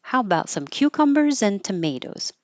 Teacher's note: It turns into a little I in, cucumbers in. And when you have two items, the first one goes up, the second one goes down.